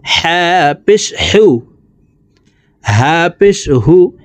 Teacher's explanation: এই হা হলকের মধ্যখান থেকে উচ্চারণ করে পড়তে হবে